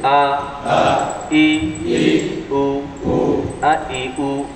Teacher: আ বলার সময় মুখটা যেমন, ই বলার সময়ও তেমন, কিন্তু উ বলার সময় পরিপূর্ণ গোল